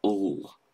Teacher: a dark L will be the version of the L at the end of the word feel. And it's like ul.